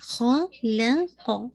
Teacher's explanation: یہ خا اور قاف موٹے ہیں، لام لائٹ ہے